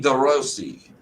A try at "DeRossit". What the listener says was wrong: DeRossit. There's two T's. That's a sit. Is it an E or a T?